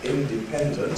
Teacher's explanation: So if we have longer words like independent, that has two stresses shown, independent, you get two rhythmic beats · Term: secondary stress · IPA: ˌindeˈpendent